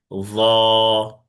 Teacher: জিহ্বার আগা সামনের উপরে দুই দাঁতের আগার সাথে লাগবে, মোটা আওয়াজে এক আলিফ টেনে পড়তে হবে।